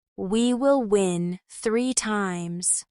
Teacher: Notice how your lips move from rounded for we to relaxed for will and rounded again for win. This quick change is part of natural English mouth movement.